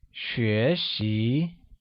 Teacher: pronounced with the mid rising tone · To learn or to study becomes 学习, where 学习 is pronounced with a mid-rising tone on both E and I